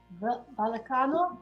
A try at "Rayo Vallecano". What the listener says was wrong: almost? Yeah, almost. Rayo. Vallecano. No, like the V is almost a B. Vallecano. Rayo Vallecano.